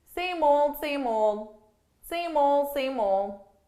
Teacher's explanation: So here I'm actually saying same old, but notice for pronunciation, I'm really just dropping those D's.